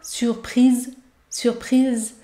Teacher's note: vous devez bien prononcer le son Z, Z, Z. Car le S se situe entre deux voyelles.